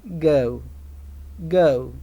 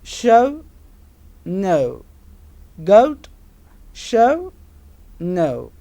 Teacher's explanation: in the beginning when we say ER the lips are neutral second element ooh the lips are rounded shape · Second element U, the lips are rounded shape. This sound occurs initially in the word.